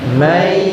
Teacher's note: Yang terjadi adalah suara nun mati dimasukkan ke huruf ya. Suara nun mati dimasukkan ke huruf ya. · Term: idgham bi gunnah